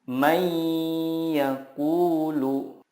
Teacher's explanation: jangan lupa untuk menahannya dan disertai dengan gunnah 2-3 harokat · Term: idgham bila gunnah